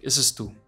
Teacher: When speaking fluently, this sounds like ese es tú. Because the vowel sounds of the A and the E, the A and the E merge together.